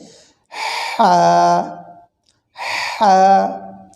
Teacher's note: বড় হা বলা হচ্ছে জিমের সাদৃশ্য নুক্তা ছাড়া যেটি সেটি হচ্ছে কণ্ঠনারীর মধ্যখান থেকে একটু চিকন চাপা আওয়াজে হবে